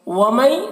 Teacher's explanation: مئی میں ادغام ناقص ہو رہا، غنہ کے ساتھ میں پڑھیں گے